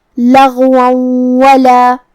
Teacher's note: تو یہاں حکم ہوا ادغام بغنہ. ہمیں تنوین کو واو میں ملا کے غنہ اور تشدید کے ساتھ یہ حکم کو ادا کرنا ہے · کلمت لغون میں یہاں حرف الغین ہے. غین کی ادائیگی حلق کے اوپر والے حصے سے ہے. غین حروف تفخیم میں سے بھی ہے تو ہم غین کو بھاری آواز میں پڑھیں گے جو کہ حرف الواو پہ تنوین زبر ہے اور اس کے بعد حرف الواو ہے کلمت ولا میں.